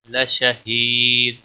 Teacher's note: کھینچ کر پڑھیں گے، باقی کسی بھی حرکت کو کھینچنا نہیں، لشہید یا مدہ ہے، ایک الف کے برابر کھینچ کر پڑھیں گے ، اور وقف کی صورت میں دال ساکن ہوگا اور کلکلہ